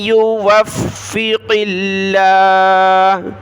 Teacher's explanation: تو یہاں ہم لفظ اللہ کو باریک پڑھیں گے کیونکہ قاف پر زیر ہے ، لیکن قاف کو ہم نے موٹا پڑھنا ہے، یہ بڑی